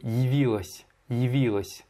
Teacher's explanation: Et tu mouilles bien le s à la fin de явилась. Hein, c'est pas, à la fin, c'est pas las, mais лась.